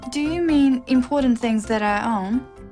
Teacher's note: it's a yes no question with a rising tone